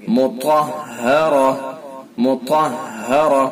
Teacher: طا کو پر کر کے پڑھیں گے اور را کو بھی پر کر کے پڑھیں گے۔ مطہرہ، مطہرہ، یہ گول تا ہے۔